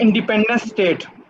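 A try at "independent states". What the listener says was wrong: स्टेट्स। आखिर वाले एस पे कंसंट्रेट कर दें सारा, इंडिपेंडेंट स्टेट्स। स्टेट नहीं है,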